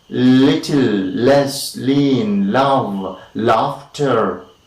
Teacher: is i'll be r that is a little little right the the blade of the tongue is against of course the teeth ridge